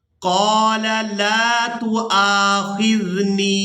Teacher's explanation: واو کو ادا نہیں کریں گے، حمزہ کو الف مدہ کی وجہ سے کھینچ کر ادا کریں گے۔ یہ جو حرکت دیکھ رہے ہیں آپ، یہ حمزہ کے اوپر ہے اور ہم نے یہاں پر حمزہ کو ادا کرنا ہے، واو سائلنٹ ہی رہے گی۔